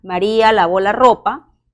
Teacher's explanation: cuando yo hago una afirmación por ejemplo maría lavo la ropa mi tono final ha descendido